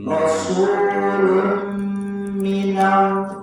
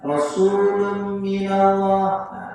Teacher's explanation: Idghamnya betul, ya, tapi harus ada gunanya. Guna itu sepanjang 2 harakat.